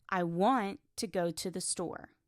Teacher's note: Here want and store are stressed. The small words to and the are weak and fast. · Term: rhythm of English, rhythm